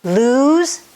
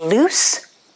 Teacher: to lose has a zed sound which you make with your tongue high in the mouth close to the back of the teeth and you vibrate the air through z whereas loose is with an s sound your tongue is also